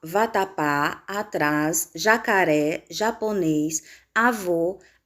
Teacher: são palavras que apresentam a última sílaba mais forte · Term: palavras oxítonas